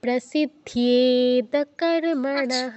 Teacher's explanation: প্রতে দীর্ঘ করেছো, দীর্ঘ করা যাবে না, প্র বলে সাথে সাথে সিতে